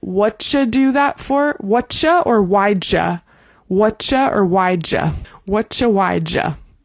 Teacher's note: the ja is the same because the u is being reduced in the same way, but the what and the why will have a different vowel sound